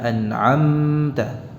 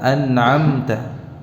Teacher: gunnah yang ada pada mim sukun yang dibaca dengan izhar itu pendek, tidak panjang, ya, tidak dipanjangkan durasinya. Sebab kalau dipanjangkan ini termasuk kesalahan, ya.